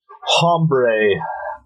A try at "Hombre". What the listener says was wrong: No, the H is silent.